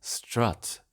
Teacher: Stressed schwas are lowered. So strut becomes strut with the near open central vowel A